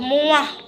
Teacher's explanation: M merupakan kontoid nasal bilabil dan bersuara dan selaput suara bergetar.